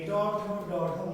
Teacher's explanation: জিহ্বা প্লাস পশ্চাৎ দন্তমূল কোন কোন প্রত্যঙ্গের সাহায্যে বা কার কার সাহায্যে, তাহলে বলবো জিহ্বা প্লাস পশ্চাৎ দন্তমূল। কোন জিহ্বা? জিহ্বার অগ্রভাগ, উল্টানো অগ্রভাগ। · ট ঠ ড ঢ মূর্ধন্য কোথায় স্পর্শ করে? পশ্চাৎ দন্তমূলে। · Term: মূর্ধন্য বর্ণ